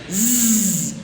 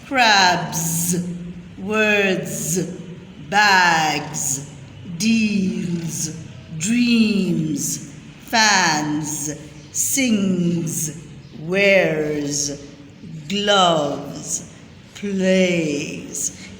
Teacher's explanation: जब हम z का साउंड निकालते हैं तो आपका थ्रोट भी वाइब्रेट करता है. ट्राई करें, z, थ्रोट भी वाइब्रेट करता है.